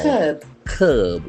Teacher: Here the middle R is silent and letter C has got a hard K sound.